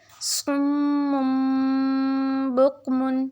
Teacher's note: صم بکم، یہاں پہ صم، یہاں پہ ایک تو میم مشدد ہے اس لیے غنہ کرے، دوسرا یہاں پہ ہم اقلاب کا قاعدہ یوز کر رہے ہیں، ٹھیک ہے۔ صم بکم، اینڈ پہ نون ساکن کی آواز آئے گی یعنی تنوین میں